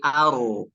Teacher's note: Ro, aru. Huruf ro ketika bertasydid maka jangan terlalu nampak sifat takriyah, sifat getaran pada huruf ro.